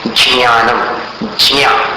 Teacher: 12 खड़ी में चवर्ग का जो उच्चारण आता है च, छ, ज, झ और न्य, तो ज के साथ न्य को मिलाना है। तो मिलाते समय एक हल्की सी क्लिक जैसी ध्वनि अपने मुख के अंदर उत्पन्न होती है।